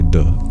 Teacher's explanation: deux, which does have that dental consonant still